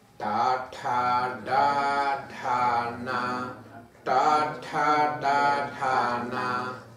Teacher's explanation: церебральные звуки, там, где закатывается немного язык наверх